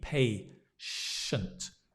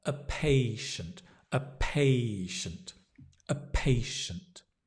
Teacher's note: you've got the diphthong pay, as in pay money, patient